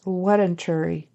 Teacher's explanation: he says a w instead of the V at the beginning